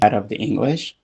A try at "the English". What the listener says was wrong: So like here, I think the English with a glottal stop in between it, like the English is potentially fine. Natives might do that, etc. But just make sure you're aware of another option. You could do the English.